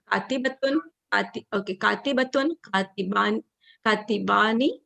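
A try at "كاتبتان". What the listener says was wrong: No, katibatani. It has a ta there as well.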